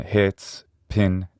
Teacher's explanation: This vowel is a near close or near high and a near front unrounded vowel. And because it doesn't fall exactly on the front axis, sometimes it's called a lax vowel as opposed to the ones that are on the front axis which are sometimes thought of as tense vowels in English.